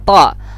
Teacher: Ta ini makhrajul hurufnya ujung lidah dengan pangkal gigi yang di atas. Ujung pangkal to.